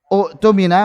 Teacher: hamzah qata'nya diubah menjadi waw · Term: mad badal